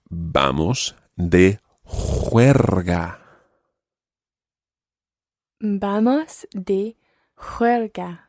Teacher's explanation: the first sound is the sound the j sound in spanish and then you've got a slightly rolled r in there and then a soft spanish g